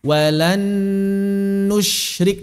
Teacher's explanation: Yang kedua dipanjangkan ghunnahnya, ditahan 2 harokat. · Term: idgham bi ghunnah